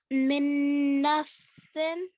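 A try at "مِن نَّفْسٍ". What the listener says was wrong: Let's make the nasal sound, the ghunna, a bit stronger. Min nafsin.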